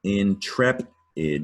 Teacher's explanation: is a three syllable word with a stress on trap